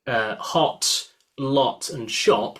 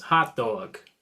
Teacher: in my accent, I've got what's called a lot cloth merge. So I would say words like hot, lot, and shop, which are lot words with an O vowel, and then cloth words like cloth, dog, and sausage, I would say also with an O sound.